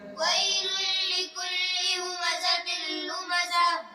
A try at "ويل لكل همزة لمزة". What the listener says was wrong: थोड़ा आराम से स्पीड में ना पढ़ें। वैलुल लिकुल्लि हुमज़तिल लुमज़ह।